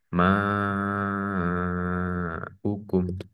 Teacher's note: Ini mat tobi'i ini bertemu dengan huruf hamzah sehingga ini adalah eh, mat wajib mutasil. Dibacanya panjang 4 sampai 5 harokat.